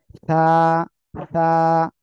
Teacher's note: মুখ দিয়ে বাতাস বের হচ্ছে কিনা এটা খেয়াল করতে হবে সা আপনারা হয়তো আওয়াজটাও শুনতেছেন যে এখানে বাতাসের আওয়াজ যাচ্ছে মাইক্রোফোনে